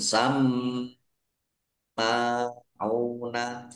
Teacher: mim fatkhah berdiri mad thobi'i. Ain dumah wawu sukun mad thobi'i. Dibaca panjang dua harakat. Lil kadzib harusnya ada alifnya alif lam qamariah ditandai lamnya dibaca sukun.